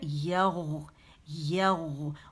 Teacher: یا باریک ہے, غو موٹی ہے · تو آپ کا بالکل جا کے کوے کو آپ کی زبان کی جڑ ہے وہ لگے گی, تو وہ مخرج ہے غائن کا.